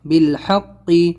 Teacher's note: حا نکالنا ہے اور قاف ادا کرنا ہے بڑا